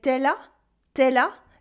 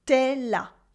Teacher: in informal French, we cut the U at the end of tu, that becomes te.